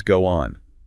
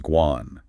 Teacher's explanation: So they connect the final O of go with the initial O of on. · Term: linking